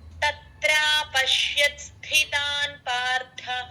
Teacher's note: స్థితాన్ స కింద థ వత్తు మహా ప్రాణం అండి